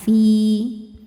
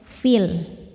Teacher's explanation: Fii jika berhenti hukumnya mad thabi'i. Sebab ada ya sukun sebelumnya kasrah. Cara bacanya panjang dua harakat fii. Namun ketika diwasalkan fii ini dibacanya pendek.